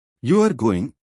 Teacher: you are going with Rising intonation it's a question or surprise you are going with falling intonation it's a statement of fact